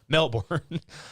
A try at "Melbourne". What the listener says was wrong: No, it's Melbourne. You don't say the R.